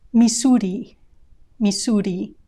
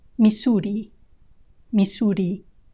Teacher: the r sound the tip of your tongue touches the area behind your top teeth just once